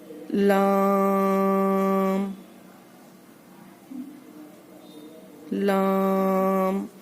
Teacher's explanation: जबान की नोक और ऊपर के सामने के 4 दांतों के मसूड़े से अदा होता है